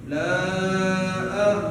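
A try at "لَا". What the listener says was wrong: Kurang. Nggak tahu kalau telinga saya itu yang kurang-kurang tuh janggal aja jadinya. Yang 5 dibuat 4, itu nggak boleh terjadi gitu. Jadi harus pas 5.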